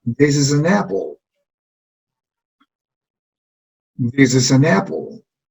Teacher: Este es el sonido E de this, is. Y este sonido de acá es una Z, is, no es S cuando lo pronunciamos. Entonces, esta S se va a unir con esta E.